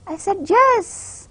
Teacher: my voice is bit louder and my pitch is bit higher, and at the same time I'm emphasizing the word yes. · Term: stress